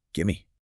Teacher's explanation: the v sound often disappears or merges completely with the following m sound. It becomes one smooth syllable.